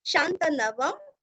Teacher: अनुस्वार का उच्चारण आधा म